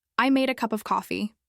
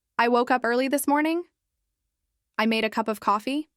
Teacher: with a rise at the end of each sentence